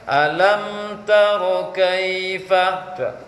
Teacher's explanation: Mim sukun itu dia punya sifat mengalirkan suara tapi tidak banyak. Menahan suara tapi tidak total.